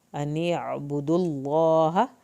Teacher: हा की ज़बर को लंबा नहीं खींचना